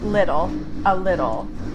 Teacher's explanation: The T sound turns into that flap T, or more like a D.